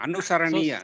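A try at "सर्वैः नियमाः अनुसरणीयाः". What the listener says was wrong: So, sarvaihi niyamaha anusaraniyaha. Perfect.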